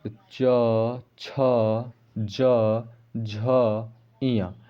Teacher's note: हैं ठीक है दोस्तों अब तालु व्यंजन कैसे हो गया तो इसको पढ़ते समय देखिए हमारा जीभ जो है तालू में सट रही है चिपक रही है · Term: तालव्य व्यंजन